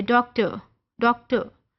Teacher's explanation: वो जो एंड में हल्का सा आपको फील होता है, दैट इज शॉ साउंड